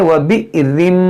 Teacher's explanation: یہاں پر حمزہ ساکنہ ہے، اس کو جھٹکا ہوگا